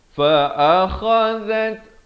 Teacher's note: Fa'akha di hujung kerongkong, zal di hujung lidah. Fa'akhazat, ada bunyi hamasnya tu.